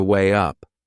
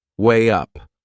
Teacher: we insert a little W sound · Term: linking sound